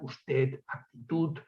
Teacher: Bien, decía que los rasgos vernáculos derivados del contacto con el catalán son muy numerosos en el consonantismo, dos fenómenos de los que me ocuparé aquí a continuación, el ensordecimiento de la D final